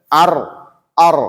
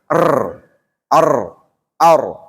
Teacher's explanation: bunyi yang mengalir hanya sebagian ketika mengucapkan huruf ra, disebabkan karena terhalang oleh sebagian besar ujung lidah pada saat bunyi itu keluar.